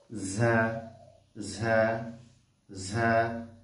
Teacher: সামনে নিচে দুই দাঁতের আগার সঙ্গে লাগিয়ে ঝা ঝা ঝা জিব্বার আগা সামনে নিচের দুই দাঁতের আগার সঙ্গে লাগে ঝা হরফটা উচ্চারিত হবে